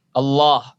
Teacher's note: Bunyi A-nya pada lafaz jalalah Allah tebal.